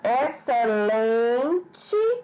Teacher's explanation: a sílaba mais forte a penúltima Então ela é paroxítona